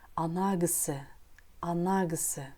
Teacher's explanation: В слове «кісі» в этом предложении звук «к» произносится как «г», потому что она идет после гласного.